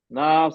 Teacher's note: क्योंकि हम रुक रहे हैं इसलिए हम चार खींचेंगे।